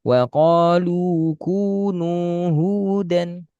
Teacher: Jadi yang sengau itu hanya awalan saja. Ketika sudah harokat dan terus kemat sudah nggak makhraj hidung lagi.